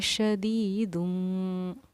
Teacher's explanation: दुन का जो नून था उसको मीम से बदल देंगे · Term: इक़लाब का कायदा